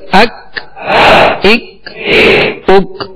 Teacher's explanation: ڈنڈی والا کاف تھا جو باریک پڑھا جاتا ہے اور اس میں قلقلہ نہیں کریں گے